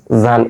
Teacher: জিহ্বার আগা সামনের দাঁতের আগার সঙ্গে লাগিয়ে হচ্ছে